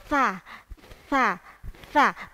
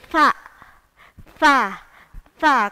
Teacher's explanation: Fa, enggak ada udaranya. Jadi ujung lidahnya menempel pada gigi seri atas atau gampangannya digigit fa, fa, fa. Tapi keluar udara. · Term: hamas